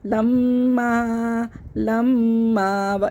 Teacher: لم، لام زبر لا ہم پڑھتے، آگے میم مشدد ہے تو ہم لام کو میم سے ملا کے پڑھ دیں گے اور غنّہ بھی کریں گے